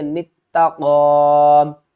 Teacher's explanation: تا کے اوپر سختی کریں گے، نون کو تا کے ساتھ ملائیں گے